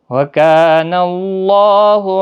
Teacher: اللہ کا لام زبر کی وجہ سے پور پڑھا جائے گا، اس کے اوپر کھڑی زبر بھی ہے، 1 الف کی مقدار کے برابر کھینچ کر بھی پڑھیں گے۔